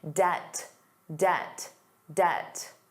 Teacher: Did you notice the B was silent?